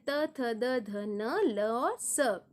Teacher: दंत यानी दांतों से इसका उच्चारण होता है, यानी प्राणवायु मुख से जब निकलती है तो दांत से होते हुए निकलती है, इसीलिए इसे दंत्य या दंतव्य कहते हैं।